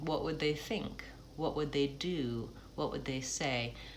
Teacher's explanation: What would they is kind of one shorter phrase, and then do, think, say, those are all stretched.